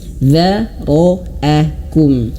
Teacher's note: Di sini huruf dzal dia tipis, dza, dan ro tebal, ro, dan hamzah tipis, dzara'akum. Jangan sampai ro-nya ini tidak tebal ya, dzara'akum, tidak, dzara'akum tidak, atau dzaro hamzahnya terbawa tebal, dzara'akum, nah, tidak, tapi dzara'akum.